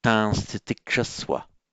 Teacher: the n changes to anuswara followed by a s